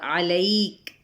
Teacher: اور علیک، عین کو وسط حلق سے، لئی پہ یا لین اور کاف پہ ہمس ہوگا۔ وقف کریں گے تو وقف بالاسکان۔